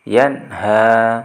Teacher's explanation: ada nun mati atau nun sukun bertemu dengan huruf H jadi harus dibaca jelas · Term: izhar